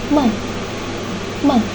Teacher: glotis dalam keadaan menyempit sehingga bunyi dialirkan dengan menggetarkan pita suara yang menghasilkan bunyi bersuara.